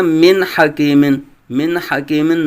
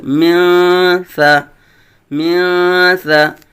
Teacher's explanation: من نہیں پڑھیں گے بلکہ نون کو اخفاء کریں گے